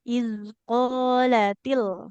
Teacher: Iz qala. Lamnya fathah ketemu alif. Berarti panjang.